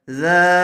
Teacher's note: ذال الف زبر ذا، زبر والے حرف کے بعد الف آیا ہوا ہے، اس لیے یہاں پر الف مدہ ہوگا، تھوڑا کھینچ کر پڑھیں گے